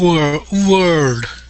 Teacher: so we want to slide from that o into that R